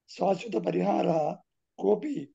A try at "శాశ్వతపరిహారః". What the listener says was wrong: విసర్గ ఉచ్చారణ ఆవశ్యకం భవతి మహోదయ పునః ప్రయత్నం